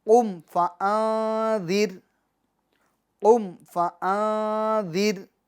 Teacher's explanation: اخفا کا قاعدہ لگے گا، یعنی گنہ کر کے پڑھیں گے